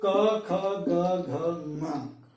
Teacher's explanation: अगर हम इसको मुंह रखें अपना, ये जिब्बा है, ये हमारा पूरा गला है, तो हम देखेंगे कि कहीं ना कहीं हमारा जो कवर्ग जब हम बोलते हैं, आप ध्यान दें, कभी प्रयास करें तो क बोलते हुए ध्यान दें अपने मुंह के ऊपर कि हमारी जिह्वा का सबसे निचला भाग जो है वो हमारे कंठ को टच करता है। कंठ से हवा का जो अवरोध है वहां पर होता है।